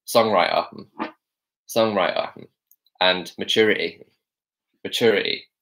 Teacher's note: right so in London we say songwriter songwriter and maturity maturity so we're dropping the t's really heavily there